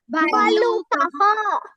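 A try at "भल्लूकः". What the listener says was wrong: ఊ కు దీర్ఘం ఉంది లుకి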